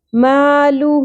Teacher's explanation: سبب مدہ حمزہ آ گیا مالہ 3 الف کے برابر کھینچنا ہے